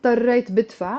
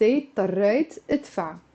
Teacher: whenever you have two consecutive verbs, you have to drop the b of the second verb. So منشيل الب.